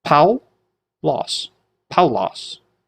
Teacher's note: And the emphasis goes on ow.